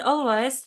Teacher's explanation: In the word always, the syllable all is stressed and the syllable way is unstressed.